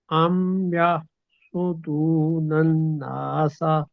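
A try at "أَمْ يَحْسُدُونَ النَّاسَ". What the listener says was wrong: نہیں نون کو لمبا کرنا تھا، نون کے اوپر شاد ہے نا، آپ ذرا ہمیں گائیڈ کریں نا کیسر بھائی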